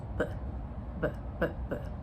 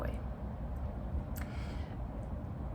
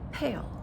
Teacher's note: So this is where we're using both lips two lips bilabial. So this um has two sounds and as we learned last week there's voiced and voiceless.